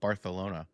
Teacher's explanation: Everything that's an S sound is a TH sound in Spain, but it's not like over the top